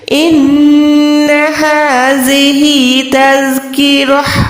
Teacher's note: ہا کو ایک سیکنڈ لمبا کریں کیونکہ کھڑی زبر کے ساتھ ہے